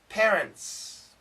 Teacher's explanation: N, S, strong sounds. T, cancel. Parents. Don't worry about the T.